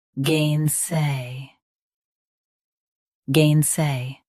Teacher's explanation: Both US and UK have the same pronunciation of this word. Stress gain, keep say clear and smooth.